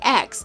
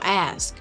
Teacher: This is called metathesis, which involves switching around sounds and words.